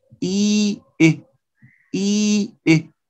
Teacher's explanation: the first two vowels, E and I, they are front, high, close. Notice they share these three characteristics.